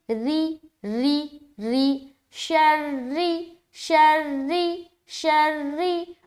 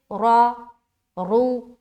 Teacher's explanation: را کو باریک رکھیں گے. جب بھی رائے مشددہ کے نیچے زیر آئے تو را کو باریک رکھنی ہے